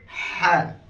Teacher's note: পাতলা, গলার হলকের মাঝখান থেকে, গলার মাঝখান থেকে